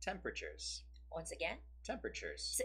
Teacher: it goes on the first syllable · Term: stress